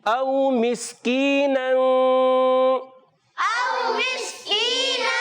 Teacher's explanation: حمزہ کو تحقیق کے ساتھ خوب واضح کر کے ادا کریں گے، واو لین نرمی سے ادا کریں گے۔ جب کبھی واو ساکن سے پہلے زبر آتا ہے واو لین ہو جاتا ہے، نرمی سے ادا کریں گے، مگر حمزہ کو واضح کر کے تحقیق سے ادا کریں گے۔